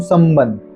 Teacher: स के बाद म की अलग से आपको साउंड आती है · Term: अनुस्वार